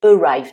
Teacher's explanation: Alors, bien préciser qu'on ne dit pas arrive, mais arrive. Donc là, le A se prononce avec le son schwa, le fameux son incontournable en anglais. Et ensuite, le I se prononce I, ce qui est normal puisque c'est le son de l'alphabet anglais pour la lettre I.